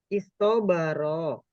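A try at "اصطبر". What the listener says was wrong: Nah, itu Ibu kalau Ibu tidak berhenti di sukun, kecetot itu lidah. Jadi kayaknya toknya panjang. Istobaro. Coba berhenti di is. Istobaro. Aman itu toknya nggak kedengeran panjang. Jadi tujuan sukun itu begitu, biar jaga gitu.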